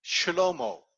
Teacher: you could pronounce that as shlomo, where you swallow this very first vowel in the word shlomo. That shwa that was over there.